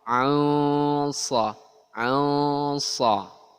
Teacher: ikhfanya ya masuk ke makhrajnya shad